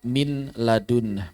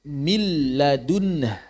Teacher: memasukkan nun ke dalam lam dan lamnya dijadikan bertasydid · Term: idgham